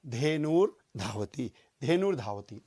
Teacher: तो ये धेनु विसर्ग के स्थान पर हुआ आधा र। अब यहां पर पीछे धा है तो ये र जो है ये धा के ऊपर चला जाएगा, र धा के ऊपर लग जाएगा और शब्द बनेगा धेनुर धावती, धेनुर धावती।